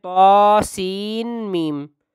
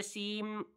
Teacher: بعض بچے اس کو پڑھتے ہیں طاسین میم، تو یہ غلط ہے، سیم پڑھا جائے گا، سین نہیں، سین یعنی بعد میں نون کی آواز نہیں بلکہ میم کی آواز آئے گی، سیم، ہونٹوں کو ملا کر، دونوں ہونٹ مل سیم۔